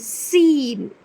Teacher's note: اور پھر سین، جو زا کا مخرج ہے وہی سین کا مخرج ہے، سین، لیکن سین کو پڑھتے وقت سی ٹی کی آواز ضرور آنی چاہیے، سین۔